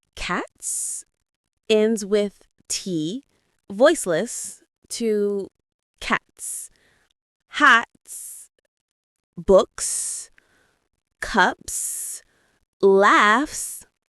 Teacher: Notice how cats and cups end with a clean S sound, no extra syllable.